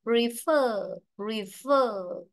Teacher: Vậy ta có ơ, là ơ dài, trong âm rơi vào nó, đúng không?